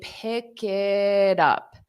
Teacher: native speakers, when we have T's between vowels, we pronounce it as a soft D.